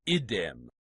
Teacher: When the neuter nominative singular id does the same, it contracts to idem, one d and a short I